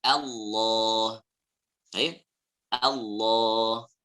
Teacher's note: Ya, terdengarnya O. Padahal yang benar adalah A.